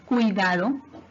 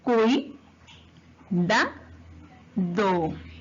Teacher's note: el dictongo se va a mantener unida, van a formar una misma sílaba